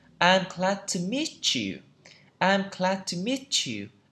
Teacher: Khi âm team là mà nó kết hợp với âm Y này, ok, T và âm Y này, nó sẽ trở thành âm ch